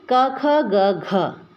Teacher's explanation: यह कंठ से बोले जाते हैं इनका उच्चारण स्थान कंठ है